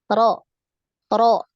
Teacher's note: ya Jadi jangan terlalu banyak takrir ya ketika mengucapkan huruf Ro Jadi berapa takrirnya satu kali ya getarannya sekali aja